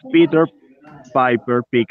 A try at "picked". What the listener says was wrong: Pick. Remember, it's not picket, it's picked. Like worked, it's picked.